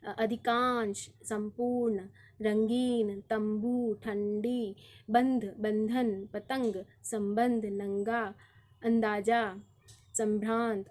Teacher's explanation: तो यहाँ पर जो भी व्यंजन आपको दिखाई दे रहे हैं उनके ऊपर जो बिंदी के तौर पे है वो अनुस्वार है, और अनुस्वार का उच्चारण हम न या म के रूप में कर रहे हैं